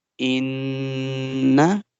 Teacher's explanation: We will not make the noon sound longer because it simply comes with fatha.